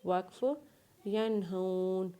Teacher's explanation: یا کو نون کے ساتھ ملاتے ہوئے یا کے اوپر زبر پڑھیں گے، ہا کو واولین کے ساتھ ملائیں گے اور نون کے اوپر زبر پڑھیں گے، اور اس نون کے اوپر غنہ نہیں کریں گے کیونکہ نون کے آگے ہا ہے، اور وقف کرنے کے بعد اس نون کو ساکن پڑھیں گے جس کے اوپر زبر ہے